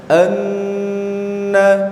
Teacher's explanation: Kalau tasdidnya huruf nun dan huruf mim itu disertai mendengung.